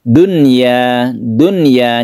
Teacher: Karena ini harus jelas, ini merupakan pengecualian dari idgham biguna, bukan duya tasydid ya, bukan, tapi dunya, dunya. Jadi dibaca apa adanya, nun mati bertemu dengan ya, ini bukan idgham biguna. · Kalau di dalam satu kata ini merupakan idhar wajib. Jadi tidak diidghamkan dan tidak didengungkan.